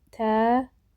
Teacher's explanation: Təəssüf sözündə təəssüf şəklində tələffüz olunur. Gördüyünüz kimi ə-nin biri düşür, biri uzanır.